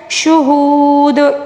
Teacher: وقف کے دوران ہم واو مدہ کو 3 الف کے برابر کھینچ کر پڑھیں گے، ٹھیک ہے، کیونکہ دال کے اوپر ساکن آئے گا، اس لیے واو مدہ کو ہم نے 3 الف کے برابر کھینچ کر پڑھنا ہوگا۔